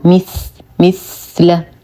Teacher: نصبر على الثا فهو حرف لثوي